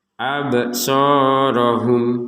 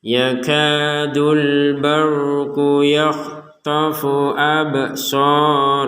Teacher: Huruf ba sukun ini di kata absarahum harus kita pantulkan. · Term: pantulan